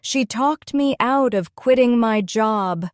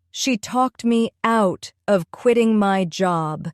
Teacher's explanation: The stress falls on talked out and quitting. The words me of and my are softer and quicker. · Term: sentence stress